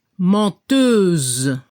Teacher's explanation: al femenino se debe escuchar la Z al final. Y no se pronuncia la E